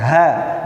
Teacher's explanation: Kalau ha ada di pangkal tenggorokan